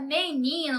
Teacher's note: na palavra menino, nós temos o ni como a sílaba mais forte, né? Também a penúltima.